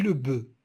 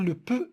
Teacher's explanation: il y a la présence de la sonorité dans be et l'absence de la sonorité dans peu